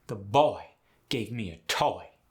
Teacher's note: in the south, the oi sound gets the exaggerated aoi sound